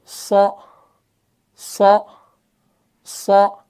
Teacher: सौद जो है इसके अंदर सिफत इस्तिआला भी है, सिफत इतबाक भी है, और सफ़ीर में से भी है।